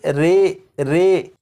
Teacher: امالہ کی راء کو اردو کے لفظ قطرے کی راء کی طرح پڑھیں گے، یعنی ری نہیں بلکہ رے پڑھیں گے